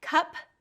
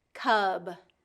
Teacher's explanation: p is the voiceless and B is the voiced